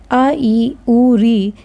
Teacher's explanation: ये दीर्घ स्वर आता है क्योंकि इसको उच्चारण करने में हमें खींच के हम उच्चारण करते हैं ना, आ ई उ री, तो ये इसको बोलने में ज़्यादा समय लगता है, इस वजह से इसको हम दीर्घ बोलते हैं।